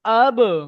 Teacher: বার উপরে সাকিন আছে, বাটি হলো হরফে কলকলা, তাই একে কলকলা করে পড়তে হবে।